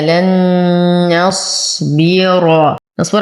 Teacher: لن نص نون ساكنة وبعدها نون متحركة، فالحكم إدغام مع غنة كاملة. لن نصبر على الصاد ونعطيه التفخيم